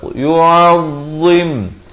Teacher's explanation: makhrajnya itu di ujung lidah tapi tebal, dia tak macam zal. Zal nipis ya, dia ni tebal.